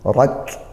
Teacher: ra berharokat fathah, kita baca tebal, tafkhim, rak, sama kafnya ditekan dulu, suaranya tertahan, rak, baru nanti didesiskan nafasnya, rak.